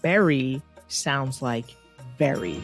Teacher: indian punjabi speakers will often substitute the v sound for the b sound